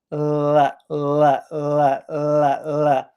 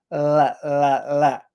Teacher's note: The first L sound is the L sound that you usually have at the beginning of a word, like life, life, later, letter, lion. So for that L sound, your tongue is at the front of your mouth